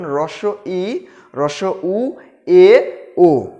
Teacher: উচ্চ স্বরধ্বনি উচ্চারণের সময় জিভ উপরে ওঠে, অর্থাৎ হ্রস্ব ই, হ্রস্ব উ, এ, ও, এই 4টা বর্ণ উচ্চারণ করার সময় কিন্তু আমরা দেখছি জিভটা কি হচ্ছে, উপরে উঠে যাচ্ছে।